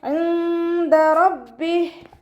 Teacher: നൂൻ സാക്കിനയെ മറച്ചു വെച്ചിട്ട് മണിച്ചോതി കൊടുക്കുക. നൂനിൻ്റെ സൗണ്ടിനെ മറച്ചു വെക്കുക. അതോടൊപ്പം തന്നെ മണിക്കുകയും ചെയ്യുക.